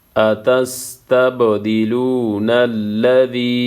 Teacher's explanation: با ساکن ہے یہاں پہ قلقلہ ہوگا